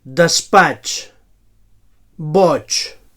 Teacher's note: So palatal africat sord